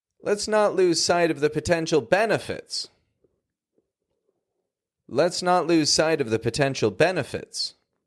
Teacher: the word benefits is raised up at the end of that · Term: intonation